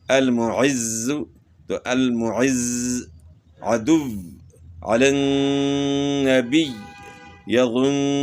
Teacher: ہونا چاہیے وقف میں بھی کہ یہ حرف مشدد ہے، اور مشدد حرف جو ہے اس میں سختی آتی ہے، آواز تھوڑی سی رک جاتی ہے ، اور آواز کیوں رکتی ہے کہ 2 مرتبہ پڑھا جاتا